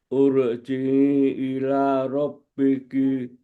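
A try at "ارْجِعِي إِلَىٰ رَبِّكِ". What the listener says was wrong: Irji'i bacanya kan ur.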